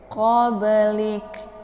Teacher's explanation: Ini merupakan pantulan ringan karena ini qalqalaf sughra. Jadi huruf qalqalafnya terdapat di pertengahan kalimat.